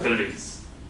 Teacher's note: the p doesn't exist in Arabic, so people replace it with a b. But then the cluster pl is very difficult for an Arabic person to pronounce, so they'll say belize.